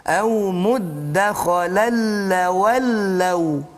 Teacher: tanwin jumpa lam, maka idgham bila gunnah juga di situ.